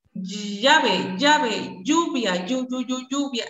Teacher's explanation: también tenemos palatales, sonoras orales